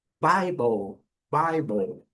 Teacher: Temos aqui o I com o som do I, que é o seu som de vogal longa, tá aqui, certo? E a segunda sílaba é uma sílaba bem bem fraca. A letra e não é pronunciada, nada de bíblia e nem de Bible.